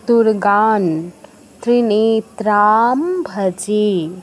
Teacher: অনুস্বারের জায়গায় নয় হসন্ত উচ্চারণ করতে হয় >> আবার কোনটা >> ত বর্গীয় অক্ষর মানে ত থ দ ধ দন্তন্য এই পাঁচটা যদি অনুস্বারের পরে থাকে সেই ক্ষেত্রে আমাদের অনুসারের জায়গায় নয় হসন্ত উচ্চারণ হবে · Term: দন্তন্য হসন্ত